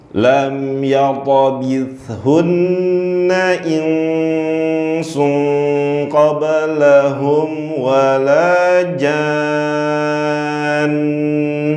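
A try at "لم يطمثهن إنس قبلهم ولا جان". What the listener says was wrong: Oke.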